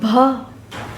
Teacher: ओष्ठ, महाप्राण, घोष व्यंजन वर्ण का उदाहरण है भ